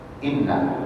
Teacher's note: Nun tasydid harus ditahan 2 harokat.